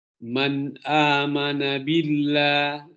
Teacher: billah ini ditarkik, ya, karena diawali dengan huruf baris kasrah